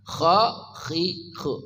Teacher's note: dari ujung kerongkongan, kha khihu ngoroknya terdengar jelas